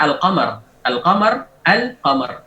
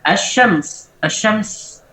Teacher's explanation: lamnya diidghamkan ke asyin.